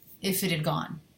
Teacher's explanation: So I'm dropping the H in had.